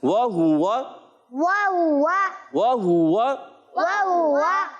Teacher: वाव की अदायगी होती है होठों की गोलाई से, और हा पर भी पेश है, तो यहाँ पर होंठ गोल होंगे मुसलसल।